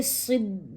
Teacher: مشدد حرف کو مضبوطی اور جماؤں کے ساتھ پڑھیں گے۔ صاد یہاں پہ موٹے حروف میں سے ہے اور زیر کی صورت میں، لہذا تخفیم کا درجہ ہوگا خامسہ